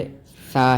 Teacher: حرف ثا جو ہے وہ زبان کی نوک اور اوپر والے جو دانت ہیں ان کے سرے سے لگتی ہے، یعنی تھوڑا سا باہر نکلتی ہے، اور اس ثا کو پڑھتے ہوئے آواز کو باہر پھینکنا پڑتا ہے، اس سے ثا ادا ہوتا ہے۔